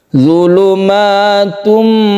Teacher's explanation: dirubah suaranya dari n menjadi m dari Tun menjadi Tum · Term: iqlab